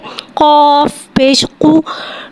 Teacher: قاف کو ایک الف یعنی تین حرکات کے برابر کھینچ کے پڑھیں گے. قاف حرف مستعلیہ ہے, لہذا کی آواز حلق سے موٹی ادا ہوئے گی. قاف کے اوپر پیش ہے, پیش کوٹوں کی گلائی کے ساتھ ادا کر کے پڑھیں گے.